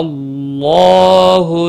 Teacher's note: شاء مد متصل ہے، چار الف کے برابر کھینچ کر پڑھیں گے. اللہ کا لام پر پڑا جائے گا زبر کی وجہ سے، اور اس کے اوپر کھڑی زبر بھی ہے، ایک الف کے برابر کھینچ کر پڑھیں گے.